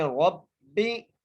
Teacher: را کو موٹا کر کے را کو با سے ملائیں گے اور باقی نیچے زیر ہے، باریک کر کے پڑھنا ہے